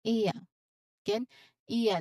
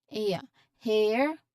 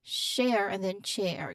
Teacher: Again, iya. This is a gliding vowel that starts with a short e sound, as in bed, and glides towards the schwa sound. Your mouth starts slightly open and then relaxes.